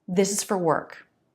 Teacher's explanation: 2 words are longer. This, work, and 2 words are shorter. Is, for. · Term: Rhythmic contrast